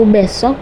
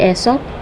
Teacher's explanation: besok, menghilangkan fonem B menjadi esok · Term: pengurangan fonem